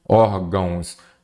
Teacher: uma palavra paroxítona a sílaba tônica é a penúltima